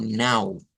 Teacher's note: Nuevamente aparece una vocal nasalizada